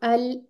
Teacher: देखें, अगर आप बोलिए ना अल, तो दांतों की बैक साइड पे जबान लग रही है